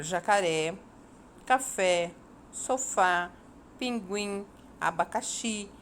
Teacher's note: Para se classificar as sílabas tônicas, contamos a sílaba de trás para frente. Muito bem, oxítona são palavras cuja última sílaba é a tônica.